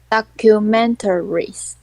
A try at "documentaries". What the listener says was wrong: Perfect. You nailed it.